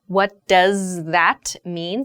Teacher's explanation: the th in that becomes like an S or a Z sound